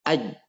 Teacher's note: tengah lidah kita kalau naik ke atas, andai kata hampir nempel itu jim